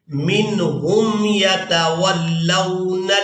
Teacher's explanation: نون ساکن کے فوراً بعد جو حرف ہے وہ حروف حلقی میں سے ہے, تو یہاں نون ساکن کی آواز کو ظاہر کر کے ادا کریں گے, یعنی یہاں پر اظہار کریں گے.